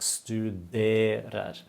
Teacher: The accent is on the 2nd syllable.